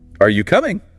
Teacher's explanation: usually the voice goes up at the end · Voice rises. Signals you expect an answer.